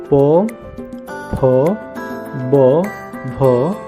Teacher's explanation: ओष्ठ मतलब दोनों ओठों के प्रयोग से इसका उच्चारण किया जाता है। बिना आप दोनों ओठों के प्रयोग से इसका उच्चारण नहीं कर पाएंगे।